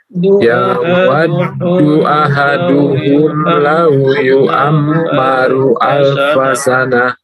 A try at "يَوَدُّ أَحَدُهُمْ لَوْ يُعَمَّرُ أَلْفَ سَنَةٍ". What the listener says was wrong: Ya, ulang lagi. Yu'ammaru, ditahan lagi mimnya. Kita ulang. Yawaddu ahaduhum law yu'ammaru alfa sanah.